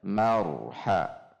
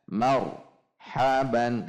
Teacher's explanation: Mar dihentak tetapi bainiah saja jadi ada getar yang terjaga marha antara er dengan ha tidak terjeda tidak dijeda misalnya Mar haban dijeda Nah itu tidak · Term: sifat bainiah